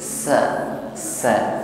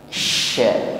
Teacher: Kita rasakan perbedaannya antara sin yang di ujung lidah desisnya dengan sya yang anginnya lebih meluas di dalam mulut kita.